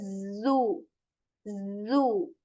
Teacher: this letter has this buzzing sound this vibration you feel when you say zo zo · this letter has this buzzing sound, this vibration you feel when you say zoo, zoo. Okay, so you articulate this letter when your like upper and lower teeth, they are like joined, they come closer, and you make this buzzing sound and say zoo.